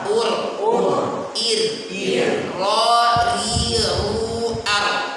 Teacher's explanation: Ada getarannya. Pertama dia menempel gusi, kedua dalam sifat dia harus menyertakan getaran yang diinginkan. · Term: huruf ro